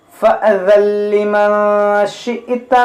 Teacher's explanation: देखिए यहाँ पर हमारे सांस टूट गई, यानी हम यहाँ वक्फ किया तो یہ حمزہ ساکنہ ہے, جھٹکا ہوگا, تا کو ساکن کریں گے, دونوں کو ساکن کریں گے اس طرح سے.